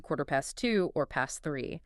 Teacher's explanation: They almost universally drop the T at the end of the word.